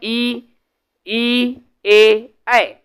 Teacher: स्वर, जिसको जीभ के आगे के भाग से बोला जाता है, ई, ई, ए, ऐ, इसको अग्र स्वर बोलते हैं।